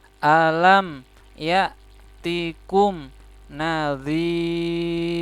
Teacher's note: ini mim sukun bertemu ya, idhar ya, idhar safawi. Jadi harus jelas. Alam ya tikum, ini hamzah sukun dibaca ya.